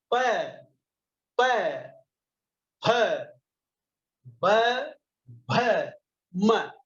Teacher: अब इसके बाद आता है ओष्ठ व्यंजन। ओष्ठ यानी होठ, जिन व्यंजनों को बोलने से हमारे होठों पर स्पंदन होता है।